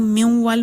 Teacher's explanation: دوسری مثال ہے میوال، اس میں ہم میوال پڑھتے ہیں تو نون کی غنہ والی صفت اس میں بھی باقی ہے، سنی جا سکتی ہے، تو یہ ادغام ناقص ہے۔